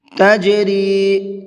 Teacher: جیم حروف قلقلہ میں سے ہے اور اس کے اوپر جزم بھی ہے، تو یہاں پر قلقلہ کریں گے، ہلکا سا آواز کو ڈبل کر کے پڑھیں گے